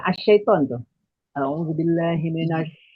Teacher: Tafasyi itu artinya menyebarnya udara, Bu. Hurufnya cuma satu, syin.